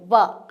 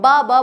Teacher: जो व है वो इकलौता एक ऐसा वर्ण है जो दांत और होठों से बोला जाता है दंत प्लस ओट ठीक है दांत और होठों से बोला जाता